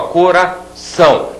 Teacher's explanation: a última sílaba é mais forte do que as outras eu digo que esta aqui é a sílaba tônica sílaba tônica